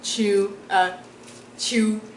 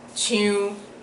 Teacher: without the nasal sound and with the nasal sound